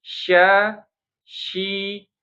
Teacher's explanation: Dia bukan huruf bibir, dia huruf tengah lidah, ya. Tetap bibirnya biasa saja.